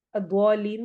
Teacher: جی، پہلی ہو رہی ہے مد لازم کلمی مثقل جو آج ہم نے پڑھی، دعا الف مد آ رہا ہے، اور اس کے بعد والا جو حرف ہے اس کے اوپر شد آ رہی ہے، تشدید آ رہی ہے، اور پھر اس کے بعد آخر میں مد عارض وقفی ہو رہی ہے، لین کو ہم نے لمبا کرنا ہے